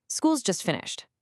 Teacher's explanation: a simple statement in English usually has a falling intonation. Listen, school's just finished. My voice goes down at the end.